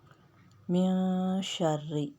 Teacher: نون ساکن کے بعد شین باریک اخفا ہوگا